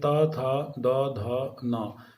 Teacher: तो त्वर्ग की ध्वनियाँ जो हैं वो दंत्य ध्वनि है, यानी जो हमारी ऊपर की दंतावली है, जीभ उनसे टकराती है, इसलिए त, थ, द, ध, न।